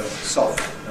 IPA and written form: sɒft (soft)